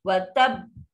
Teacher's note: Wa tab. Bunyi be tu lambat sikit. Sebab dia bersabdu huruf yang double. Kena pegang dulu sebab tu dia paling kuat.